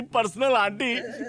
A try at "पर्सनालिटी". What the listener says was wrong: ताऊ पर्सनल आंटी नहीं, पर्सनालिटी पर्सनालिटी।